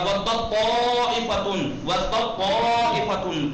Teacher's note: تے کا تو کا مخرج ایک ہے لیکن صفت الگ ہے. تو کو موٹا پڑھا جاتا ہے، درست اور پراجن.